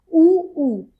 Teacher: उ और उ के उच्चारण में ओष्ठ की आकृति वृत्ताकार हो जाती है।